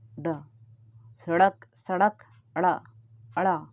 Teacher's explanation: जैसे ही जीभ ऊपर टच होती है फिर नीचे आती है। तो उत्क्षिप्त मतलब जीभ का ऐसा प्रक्रिया जिसमें हमको लग रहा है कि जीभ ऊपर टच हो के फिर से नीचे आ रही है। · इनको फेंका हुआ हिंदी वर्णमाला में जैसे कि जैसे ही हम इनका उच्चारण करते हैं ड, ड, ध तो ऐसा लगता है कि जीभ ऊपर से टच होके नीचे फटाक से नीचे आ जाती है · जीभ ऊपर टच होती फिर नीचे आती है। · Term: उत्क्षिप्त व्यंजन